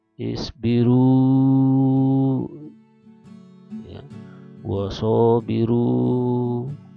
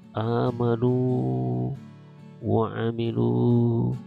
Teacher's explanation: maka waw ini membentuk panjang dari huruf sebelumnya ketika dia berharokah dhammah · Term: waw sukun